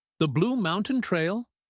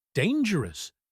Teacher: Notice her voice goes up at the end.